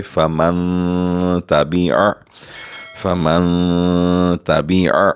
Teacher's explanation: نون ساکن کے وقت آواز ناک میں لے جا کر تھوڑی دیر 2 سیکنڈ کے لیے روکیں گے، اخفا کریں گے، غنہ بھی کریں گے، کیونکہ نون ساکن کے بعد تا حروف اخفا میں سے ہے.